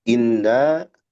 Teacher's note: Terdapat gunah pada nun in ditahan ya.